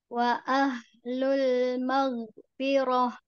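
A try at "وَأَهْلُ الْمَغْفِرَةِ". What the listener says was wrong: Nah, lebih tebal lagi sedikit lagi. Nah, fi-nya Bu lebih fi. Fi. Maghfirah.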